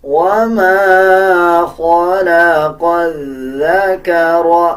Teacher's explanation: خا کو پر یعنی موٹا پڑھا جائے گا. اس قاف کو بھی موٹا پڑھا جائے گا.